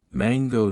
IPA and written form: ˈmæŋɡoʊ (mango)